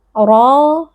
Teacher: huruf tafkhim, dibaca tebal dengan menaikkan pangkal lidah. Kemudian pada ra juga terdapat mad tabi'i, sehingga di sini ra kita baca panjang 2 harokat karena ada alif yang sebelumnya berharokat fathah, dibaca panjang 2 harokat.